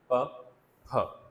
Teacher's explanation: दोनों साउंड जो हैं वो स्टॉप्स हैं, प, फ, लिप्स को हम मुकम्मल तौर पे बंद कर देते हैं। दोनों जो है बाइलेबियल हैं, दोनों लिप्स हम इस्तेमाल कर रहे हैं ना, ठीक है, बाइलेबियल हो जाएंगे।